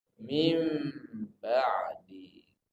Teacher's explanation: mengganti suara nun mati atau tanwin menjadi suara mim yang diganti suaranya saja huruf tak boleh diganti penulisan tak boleh